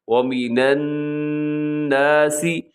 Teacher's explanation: یہاں نون مشدد ہے، یعنی نون کے اوپر شد آپ کو نظر آ رہا ہے الناسی میں، تو آپ نے یہاں غنہ کرنا ہے